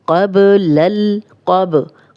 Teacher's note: कौफ मोटा है और बा पे कलकला है